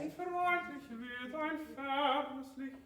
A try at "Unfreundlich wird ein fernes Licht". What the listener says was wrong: Yeah, but you open up too much.